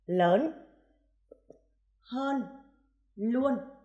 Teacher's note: tiếng kết thúc bằng âm cuối n như lớn hơn luôn khi phát âm những âm cuối n đầu lưỡi cong lên đúng ở vòm trên của miệng